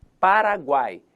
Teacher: No tritongo, eu tenho uma posição fixa, eu tenho a vogal no meio e as semivogais nas periferias. Paraguai, então temos semivogal, vogal e semivogal.